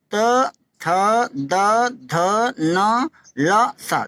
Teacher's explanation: इसमें दांत को छुआ, जब उच्चारण में जीभ ऊपर के दांतों को छूती है। अगर ऊपर के दांत आप नहीं छुआते हैं तो शुद्ध उच्चारण नहीं होगा।